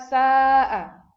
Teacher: Karena mad tabi'i bertemu dengan hamzah dalam satu kata. Ya, ini disebut dengan mad wajib mutasil dan panjangnya itu 4 sampai 5 harakat